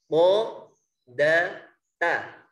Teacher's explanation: ujung lidah mengenai pangkal gigi seri yang atas